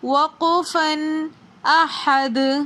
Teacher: دال حرف قلقلہ میں سے آ رہا ہے ورڈ کے آخر میں، تو اس لیے حالت وقف میں ہم دال کے اوپر قلقلہ کر کے پڑھیں گے، وقفن، احد۔